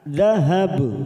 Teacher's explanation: Karena kita wakaf di sini, maka ujungnya kita pantulkan karena ada huruf ba dan kita membaca wakaf